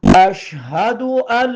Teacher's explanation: اش شین پر جزم ہے شد نہیں ہے بالکل زور نہیں لگے گا